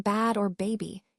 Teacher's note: For example, for the B sound, as in bad or baby, your lips come together to block the air and then release it